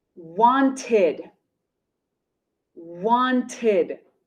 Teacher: see the base verb is want want ends with a t want ends with a t so the e d ending is pronounced id